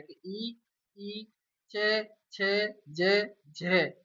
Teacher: जैसे ही बोलेंगे हम तो जीभ हमारी तालु पर टकराएगी। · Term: तालु वर्ण